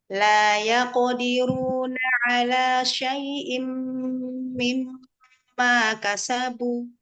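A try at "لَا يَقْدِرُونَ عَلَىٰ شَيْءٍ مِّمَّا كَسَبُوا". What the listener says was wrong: Ru-nya pengen tebal lagi. Mimmat. Rendahkan huruf ma, fathahnya. Ro-nya tebalkan. La yaqdiru.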